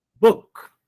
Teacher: You just have to put it, high to low pitch.